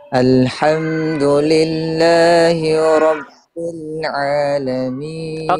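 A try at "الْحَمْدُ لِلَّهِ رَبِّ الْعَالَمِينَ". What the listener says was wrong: kayak h h kayak diseret Alhamdulillah H langsung satu harakat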